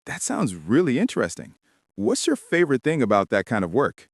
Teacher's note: Try to use that friendly, rising tone at the end.